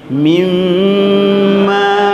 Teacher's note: Kalau ini meleburnya karena berubahnya nun sukun ini, ya, nun sukun berubah jadi melebur, ya, baru berdengung